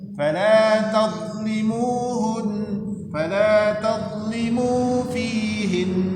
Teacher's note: Dhad itu bukan huruf qalqalah, jadi tidak dibaca memantul